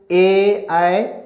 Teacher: ए ऐ का उच्चारण कंठ तालु से होता है